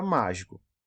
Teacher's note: quando a antepenúltima foi a tônica é a sílaba mais forte da palavra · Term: sílaba tônica